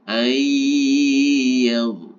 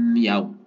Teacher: Ayyaw, sama, ditahan dulu sekira 3 ketukan. Nah, sehingga seakan-akan ini nunnya itu tidak ada. Ya, nun bertemu dengan ya, itu bacaan tajwidnya adalah idgham bi gunnah.